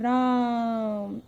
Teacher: राम को इस तरीके से लंबा खींच के रा बोलेंगे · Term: प्लुत स्वर